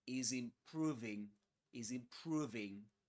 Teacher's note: the final Z at the end of is connects with the initial vowel sound in the next word improving. So we we say is is in is improving is improving.